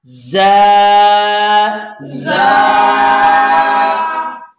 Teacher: زبان کی نوک اور دونوں دانتوں کے اندرونی کناروں سے زا ادا ہوگی